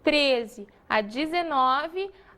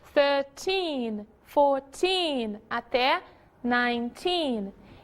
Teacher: De 13 a 19, a força da palavra está no teen.